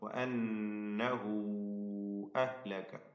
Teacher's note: മദ് മുൻഫസിലിന്റെ വിധി നൽകപ്പെടുന്ന ദീർഘമാണ്. ഹ ഉദ്ദമീറിനെ 4-5 ഹറക്കത്തിന്റെ അളവിൽ ദീർഘിപ്പിക്കുക. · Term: ജായിസ ദീർഘമാണ്